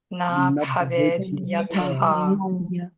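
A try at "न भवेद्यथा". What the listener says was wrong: And after that A, baved is long. So it's na baved yata. Na.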